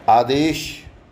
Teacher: आदेश में शय तालव्य शय होता है, जिसको हम बोलचाल में शय शरबत का कहते हैं